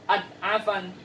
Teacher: Nah, jadi jangan dibaca juga ad'afan, harus diperjelas huruf dha-nya ya, dan tidak ada qalqalah di sini. Sehingga tidak boleh dibaca adha'afan, itu salah ya.